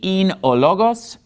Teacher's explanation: En-archi in ologos. And notice in logos, I'm putting the stress on the first syllable because that's where the accent mark is